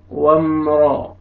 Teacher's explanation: वाव ज़बर मीम जज़म वम, रा ज़बर रा वम रा, रा को आपने मोटा करके पढ़ना है